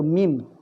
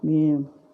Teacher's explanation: Contohnya sekadarnya sehelai kertas boleh masuk dalam mulut. Kalau mim yang sebetul, kita tutup mulut dengan rapat, iaitu mim. Tapi kalau tanwin, kalau huruf iklab, kita hanya meletakkan bibir mulut saja